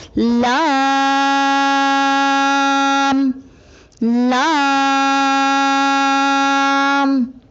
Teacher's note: لام کی ادائیگی میں زبان کے باریک کنارے کو اوپر والے دانتوں کے مسوڑوں سے لگا کر باریک آواز میں پڑھیں، یعنی لام۔ آئیے مشق کیجیے۔